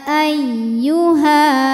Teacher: ketika berhenti di Ha ini panjang dua harakat karena hukumnya Mad Thobi'i sebab ada Alif sebelumnya berharakat fathah namun ketika diwasalkan maka Ha